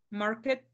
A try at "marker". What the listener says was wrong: Marker con R. De la R. Marker. Marker.